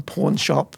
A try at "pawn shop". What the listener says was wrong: Now that sounded like porn shop.